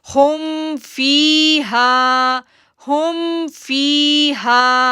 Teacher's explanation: اب دیکھیں فی پہ ایک رول آیا، یا ساکن سے پہلے کسرہ ہے، ہا پہ ایک رول آیا، الف سے پہلے زبر ہے تو اس کو 2 سیکنڈ کے لیے کھینچنا ہے